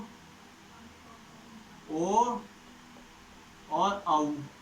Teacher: कंठोष्ठ, जो कि कंठ और ओष्ठ दोनों से बोलेगा